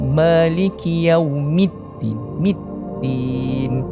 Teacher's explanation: Bila kita nak sebut mim yang berbaris bawah adalah mi, bukan me.